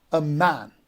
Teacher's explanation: would be stress so let's see an example that a man a would be unstress and man would be stress so a man would make one foot that would be AIC